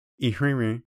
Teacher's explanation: Next, we have two wrens for erenre. Unlike the English word wren, each wren in erenre ends with a nasal vowel, not an N sound.